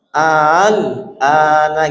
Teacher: ada dua huruf yang dibaca a sama a. Tapi a yang kedua ditashil antara alif dan hamzah